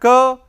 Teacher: It is voiceless velar plosive.